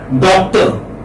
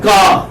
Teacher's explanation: R is not pronounced when it occurs at the final position in English language. Americans do pronounce R, but you know, say when you're talking about received pronunciation, when you're talking about say copy pronunciation, then R is not pronounced.